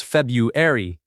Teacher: Most people drop the first R sound.